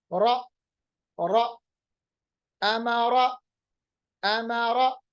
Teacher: اور را پڑھتے وقت زبان میں تھر تھراہٹ یعنی آواز میں تھر تھراہٹ پیدا ہوتی ہے، جس کو ہم صفت تقریر بھی کہتے ہیں. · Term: تکرار